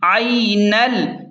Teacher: نون کو ڈائریکٹ لام کے ساتھ ملا کر پڑھیں